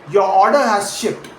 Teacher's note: let your pitch drop naturally to the word ship, falling down at the very end.